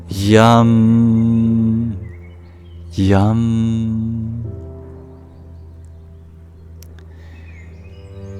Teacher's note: we make a palatal approximate we Arch our tongue up to the soft pallet yum yum higher in the throat there